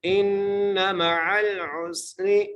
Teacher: حمزہ کو نون سے ملانا ہے اور نون پر غنہ کریں گے